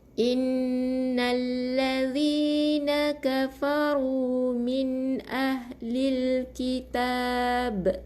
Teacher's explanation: matikan dengan ba yang qalqalah kubra